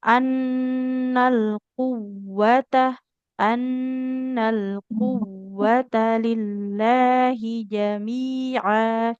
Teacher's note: jangan seperti kofnya yang panjang, tapi huruf wawunya yang kita tekan karena huruf bertasid.